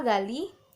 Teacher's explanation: huruf G itu hidup, termasuk oral, termasuk velar, dan masih termasuk juga ke dalam plosif